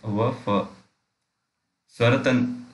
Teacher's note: दंतोष्ठ, दांत, निचले ओठ तथा ऊपरी दांतों से